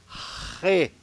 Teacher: ele é um R puxado lá do fundo da garganta